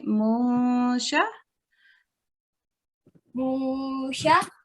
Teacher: And an ikhfa sound is a slight hidden noon. Rather than saying munsha, which is very clear noon, mun, we say musha.